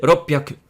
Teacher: there's a double P sound in ropyaku